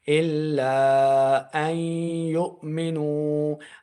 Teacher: جب بھی اس طرح کا ہو کہ پہلا متحرک یعنی اس کے اوپر زبر زیر پیش ہو اور دوسرا ساکن ہو، تیسرا مشدد ہو، تو ہم نے کیسے قاعدہ لگانا ہے، حمزہ کو یا کے ساتھ ملا کے پڑھنا ہے، نون کو چھوڑ کے · ہم نے کیسے پڑھنا ہے، یا کے ساتھ ملانا ہے، اور غنہ بھی کرنا ہے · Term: ادغام